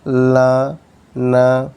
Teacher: tongue position, tongue tip or blade touches the alveolar ridge. Okay, for example, la, na, your tongue is touching alveolar ridge, making a complete closure by the tip of the tongue and the alveolar ridge, followed by sudden release of closure.